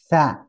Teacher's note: menyebut nanti huruf sa, itu biasanya dikeluarkan ujung lidahnya